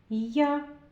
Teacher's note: Чуєте, як отримуються два звуки? Це звук й приголосний і звук а- голосний.